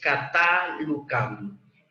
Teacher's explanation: Sí, el acento está sobre la última sílaba. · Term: Aguda